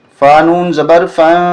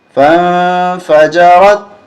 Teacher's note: فا کو نون کے ساتھ ملائیں گے اور اخفا کریں گے